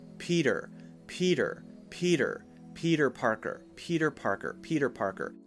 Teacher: we say Peter Parker it sounds like we're trying too hard let's change the T to a light D sound